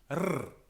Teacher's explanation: R was trilled with the tip of the tongue